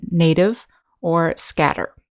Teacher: the voiced sound where t sounds more like duh · we have the voiced sound, where T sounds more like D. And remember the voice sound, you can put your fingers in your throat and you will feel the buzzing noise.